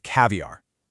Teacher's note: That open a at the start, the correct V in the middle. Remember, teeth on lip, and then really pronouncing that American R at the very end.